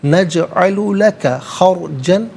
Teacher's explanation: را ساکن ما قبل خا پر زبر, را ساکن کو پر کر کے پڑھیں گے